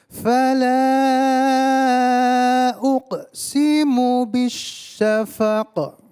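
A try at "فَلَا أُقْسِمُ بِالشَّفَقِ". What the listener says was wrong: Ya, kalau qaf itu qalqalahnya lebih ke arah o, uqa, bukan uke ya, uqa. Fala uqsimu bisyafaq. Jadi huruf qaf ketika dia sukun maka harus qalqalah. Syafaqa, qaqiqu baqa ya. Fala panjang. Fala uqasimu ya.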